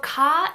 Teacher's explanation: to get it right so car is a very neutral consonant it's not voice that's not aspirated there is minimal friction between the back of your tongue and the soft palate